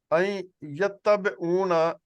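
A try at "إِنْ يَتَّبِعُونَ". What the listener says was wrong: نہیں، این یتبعون، این نہیں پڑھیں گے، این یتبعون،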